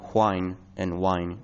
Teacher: Some English speakers, such as in Scotland, Ireland, or older Americans, might still have whine and wine distinct.